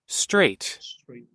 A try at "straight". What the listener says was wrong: so there's no g sound. So many Indonesians say it with the g sound. Straight. There's no g sound. S-T-R-A-T. So straight. In the middle, you have that Y sound, the swinging sound, straight. So not straight, but straight.